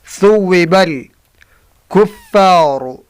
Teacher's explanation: هل ثوب ثا کو سے ادا کرنا، ثا اس طرح ادا ہوتا ہے۔ زبان کی سر دو سامنے والی اوپر دانتوں کی سر سے لگا کر ادا ہوتا ہے